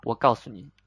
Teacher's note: Itself it is pronounced fourth tone 诉, but two fourth tone normally the second fourth tone you pronounce very light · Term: neutral